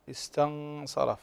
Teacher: وكذلك عندنا النون ساكنة إذا بعدها الصاد، صاد من حروف الإخفاء الحقيقي، استنصره استنصره، فعندنا الراء مفخمة لأنها مفتوحة